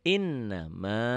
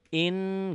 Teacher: Innama, innya ditahan, nanya dilepas, jangan inna, jangan in gunnah tuh ditahan dengung ya, dengung ke hidung ya, ditahan ada panjangnya double